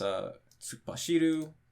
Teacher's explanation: Pitch accent is on the fourth mora.